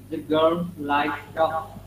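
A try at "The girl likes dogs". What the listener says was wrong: Mấy cái chữ S thì phải đọc nhá, chữ S của like đọc là S, chữ dog đỡ chữ S của con chó đọc là Z.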